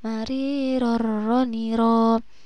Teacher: Ini ada tanwin yang bertemu dengan huruf ro, maka harus dibaca idgham bila gunnah.